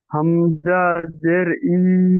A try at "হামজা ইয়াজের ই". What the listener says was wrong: জি, হামজা ইয়া, হয় নাই, হামজার পরে ইয়া এসছে না। হামজা ইয়াজের ই।